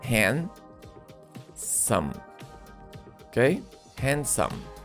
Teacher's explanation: notice that in pronunciation we do not pronounce letter d